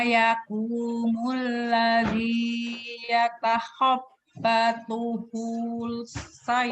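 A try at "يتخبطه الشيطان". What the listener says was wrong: Oh-nya pendek. Yatakhabbatuhush pendek. Kama yakumul ladzi yatakhabbatuhush syaitanu minal mas.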